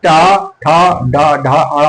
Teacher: टा वर्ग जो है ये मूर्धा से जो उच्चरित होते हैं